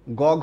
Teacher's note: এই যেই ধ্বনিগুলোর সময় কণ্ঠ বেশি কাঁপে সেগুলোকে বলা হয় ঘোষ